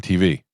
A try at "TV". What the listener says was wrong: You put the the emphasis on the T, not the V.